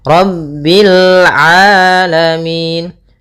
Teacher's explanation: Rabbil rnya tebal ro tafkhim